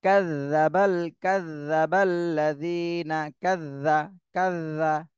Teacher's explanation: কিন্তু এইটা একটু খেয়াল করতে হবে, জাল জাল কিন্তু শক্ত হরফ না, এটা নরম হরফ। তাহলে জালটা হলো জিহ্বার আগা, সামনের উপরে দুই দাঁতের আগার সাথে হালকা ভাবে লাগাতে হবে। কাযযাবাল কাযযাবাল্লাযীনা কাযযা কাযযা, নরম ভাবে একদম জিভের আগা সামনের উপরে দুই দাঁতের আগার সাথে হালকা ভাবে লাগাতে হবে।